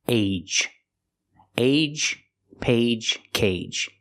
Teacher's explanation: use the long a like say and day with a J at the end like juice and jump